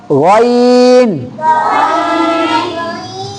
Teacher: غین, یہ حلق کے سب سے اوپر والے حصے سے, یعنی یہ زبان کے آخری جڑ سے یہ ادا ہو جائے گا.